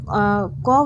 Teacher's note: तो क वर्ण का उच्चारण स्थान जो हो जाएगा कंठ हो जाएगा